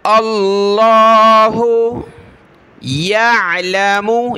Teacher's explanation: या को आइन के साथ मिला, आइन को गले से निकालें.